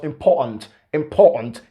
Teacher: he didn't pronounce the t in that unstressed syllable